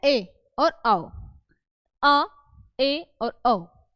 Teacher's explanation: अर्ध विवृत स्वर में मुख हमारा जो है वो आधा खुलता है